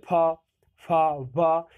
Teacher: ओष्ठ का मतलब हो जाता है दोनों ओठों से, दोनों पा, ठीक है, फा, फा, वा, ये आप देख रहे होंगे।